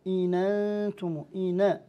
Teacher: أما ورش فينقل حركة الهمز إلى النون الساكنة فيقول إن أنتم إن، هذه الفتحة جاءت من الهمزة نقلت إلى النون من الهمزة، هذا يسمى نقل حركة عند ورش، وشروطه أربعة معروفة.